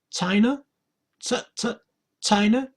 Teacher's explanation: the stress is on the first syllable, China